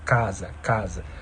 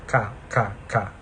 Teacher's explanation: A língua encosta lá no véu palatino, lá atrás.